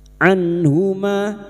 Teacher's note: nun sukun bertemu ha idhar halq nun sukun dibaca jelas tanpa mendengung